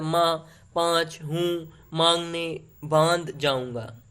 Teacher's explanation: और अनुनासिक का होता है कि अनुनासिक स्वरों का गुण है, इसके उच्चारण में हवा मुख के साथ नाक से भी निकलती है